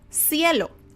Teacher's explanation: for me in mexico the letter c has an s sound